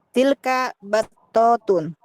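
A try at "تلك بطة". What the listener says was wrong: Kependek, battotun.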